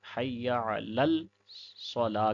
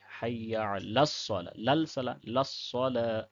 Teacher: اوپر والے میں بعض احباب یہ بھی غلطی کر جاتے ہیں کہ اس لام کو بھی پڑھ دیتے ہیں، حی لل صلاح کہہ دیتے ہیں۔ تو لام یہ سائلنٹ ہے، لام، اس لام کو صاد کے ساتھ ملانا ہے